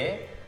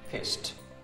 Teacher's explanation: Karena bunyi akhiran huruf satunya S, pissed, dan S itu voiceless.